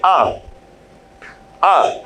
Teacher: आ बोलेंगे तो ओष्ठ गोल आकार की आकृति नहीं होगी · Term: अवृत्तमुखी